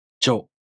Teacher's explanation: To pronounce Jo, the tongue moves from the [dʑ] sound to the [o] vowel.